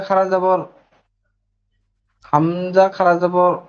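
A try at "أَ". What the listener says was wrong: আ, টান দেন না, আ।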